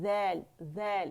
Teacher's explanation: buzzing sound اس میں نہیں ہوگا باریک ہے